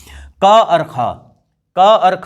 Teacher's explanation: क और ख जो है इन्हें अघोष व्यंजन कहा जाता है, ओके। इनके उच्चारण करने में जो है कोई कंपन नहीं होता है।